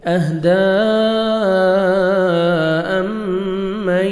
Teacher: اہدی امن، میم مشدد غنہ کریں گے، آگے ادغام ہے، نون ساکن کا ادغام ہے، یہاں پہ آپ نے غنہ کرنا ہے، نوز میں ساؤنڈ لے کے جائیں گے